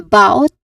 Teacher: It starts with a short a vowel sound, and then bout, which has a clear diphthong sound. The diphthong sound here is ow. So bout, ow.